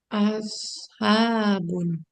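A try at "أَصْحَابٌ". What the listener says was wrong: Habun. Nah, dia bukan shin, ya. Dia bukan dalgona, bukan shin. Kalau shin dia agak menyebar nanti gitu. Tapi enggak, kalau shot dia enggak menyebar. Habun.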